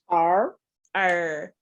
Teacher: what you do when you're making that R sound is you kind of pull your tongue backwards in your mouth